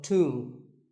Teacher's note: the B is silent and the O is pronounced with an oo sound. So tomb.